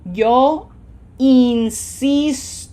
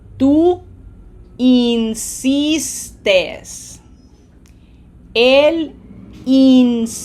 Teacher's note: it is syllable number 2 that gets pronunciation emphasis, and these are 3-syllable words